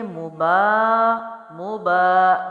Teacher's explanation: با زبر الف ہے، ایک الف لمبا کریں گے